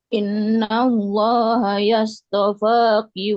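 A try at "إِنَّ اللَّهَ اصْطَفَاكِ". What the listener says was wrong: Tadi saya mendengar innallaha yastopak. Emang ada ya-nya? Innallaha astafak gitu kan.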